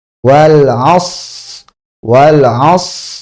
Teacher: Shad sukunnya ini sempurnakan dengan hamsnya karena punya hams juga.